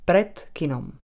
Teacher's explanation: Napísané D sme vyslovili ako T. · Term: spodobovanie